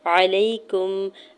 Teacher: یا ساکن سے پہلے زبر ہے تو یہاں پہ یا لین ہو رہا ہے، نرمی سے موڑتے ہوئے ادا کرنا ہے